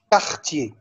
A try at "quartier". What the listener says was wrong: لا مش كوا كا كارتيي.